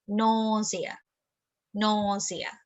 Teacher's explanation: the stress is on the syllable no